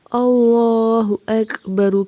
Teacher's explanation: اللہ لام کو موٹا پڑھیں گے، ہا کو تیزی سے پڑھیں گے، حمزہ کو کاف سے ملائیں گے، کاف پہ ہمس ہوگا یعنی سانس جاری رہے گی، با اور را کو تیزی سے پڑھنا ہے، را کو موٹا پڑھنا ہے۔